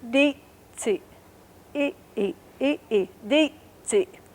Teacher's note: So it's di, si, e, e, e, e, di, si. So this is a high-pitched vowel and a low-pitched.